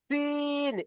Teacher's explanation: সিনের মাখরাজ হলো জিভের আগা এবং সামনের উপরের ও নিচের 4 দাঁতের আগার সাথে লাগিয়ে উচ্চারিত হয় সিন। সিন, এই জিভের আগা এবং সামনের উপরে 2টো দাঁত, সামনের নিচের 2টো দাঁত, এই 4টি দাঁতের আগার সাথে মিলিত হয়ে সিন উচ্চারণ হয়।